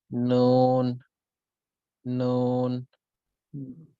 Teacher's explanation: জিহ্বার আগা উপরের পাটির দাঁতের মাড়ির গোড়া থেকে একটু উপরে লাগিয়ে